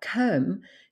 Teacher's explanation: she doesn't pronounce it as open with an o sound as what you would usually be used to it's more closed it's more of a u sound